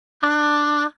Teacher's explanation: the first tone is high and flat